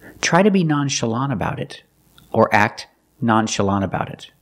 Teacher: the NT at the end of the word is between vowels when you link the words so you don't really hear the T · the tongue goes up to make the T position but you don't really hear it